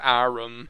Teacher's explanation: some people pronounce the word arm, like, as arum here